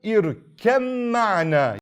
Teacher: What happens if the letter Mim comes after Ba? Ba is removed and Mim is read with Shaddah. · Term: Idgham Mutajaanisayn